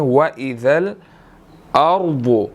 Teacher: را اور ضاد دونوں کو موٹا ادا کرنا ہے